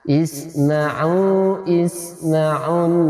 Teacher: di suara nunnya ditahan satu alif